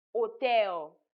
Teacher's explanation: And then another example here is the silent H in words like hotel. The H at the beginning of hotel is silent. It's not pronounced.